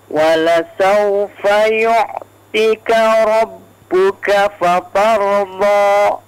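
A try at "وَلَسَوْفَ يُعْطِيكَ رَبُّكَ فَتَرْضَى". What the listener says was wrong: Ti-nya di situ 2 harakat ya, agak dipanjangkan. Yu'tika.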